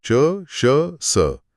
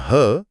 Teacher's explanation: च, श, स, ये तीनों तो अघोष हैं, लेकिन ह सघोष होता है।